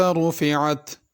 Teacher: وَإِلَى السَّمَاءِ كَيْفَ رُفِعَتْ، السماء پہ مد ہے، اس کو کھینچ کے پڑھنا ہے، رفعت کے را کو پر کرنا ہے